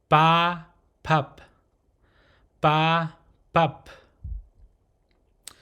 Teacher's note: it's a P sound, but it does not have a strong aspirated sound like you hear in English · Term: softer P sound